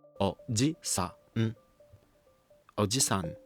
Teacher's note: In oji-san, the high pitch falls on ji. Native English speakers naturally treat this syllable like a stressed syllable in English, which makes it sound close to oji-san.